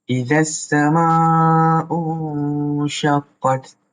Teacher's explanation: awak baca dengan samar-samar, iaitu ikhfa hakiki